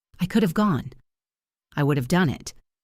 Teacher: It is never of. It is always the verb have being reduced down to a tiny little sound. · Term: uv sound